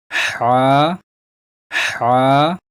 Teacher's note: اس کو ہا نہیں پڑھنا ہے، اسے حلق سے نکالنا ہے